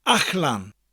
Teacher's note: It's spelled A-L-L-A-N. Again, the double L sound sounds a little bit different in the middle of a word. It's a CH sound with a slight L. Ach-lan. Out.